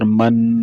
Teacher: آخر میں یہ نون ساکن آ گیا نا، تو یہ اب ناک سے ادا ہوگا۔ تو اسی تمام تختی میں جو بھی حروف آ رہے ہیں تو اس سب میں یہ غنہ ادا کیا جائے گا۔